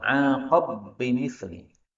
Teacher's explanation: ba ketemu ba boleh idgham